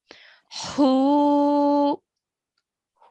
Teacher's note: we have the letter h which is made from the middle of our throat